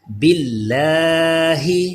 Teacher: یہ لام بھی باریک کیونکہ زیر ہے اس سے پہلے